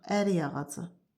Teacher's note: Sonra ərik ağacı birləşməsində də yenə də ərik sözü özündən sonra gələn söz saitlə başladığına görə y ilə tələffüz olunacaq